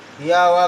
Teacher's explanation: अर्धस्वर दो ही मिलते हैं आपको, या वा को अर्धस्वर कहते हैं। इनका उच्चारण करते समय मुखांग न के बराबर स्पर्श करते हैं, अतः इन्हें अर्धस्वर कहते हैं।